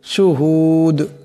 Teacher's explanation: পেশ দুন শুহুদুন কিন্তু এখানে দম সারলে দাল সাকিন হয়ে যাবে দাল কলকলা হরফ আওয়াজ সাথে একটি টক্কর খাবে